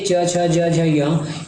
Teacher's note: ये हमारे तालू से उच्चारण होते हैं